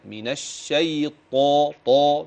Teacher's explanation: من الشيطان الرجيم دي طاء مش تاء